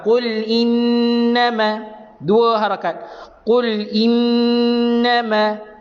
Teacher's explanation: Bila mana kita jumpa nun bersabdu dalam Quran, kita dengungkan 2 harakat.